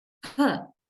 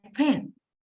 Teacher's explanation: we produce the phoneme per with a very big articulatory effort, with a puff of air